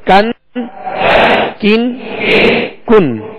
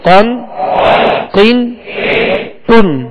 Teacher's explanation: काफ को बारीक डंडी वाला जो काफ होता है उसको बारीक पढ़ेंगे, और इससे आगे जो कौफ है इसको पुर पढ़ेंगे, मोटा पढ़ेंगे, इसलिए कि ये हुरूफ मुस्तालिया में से है।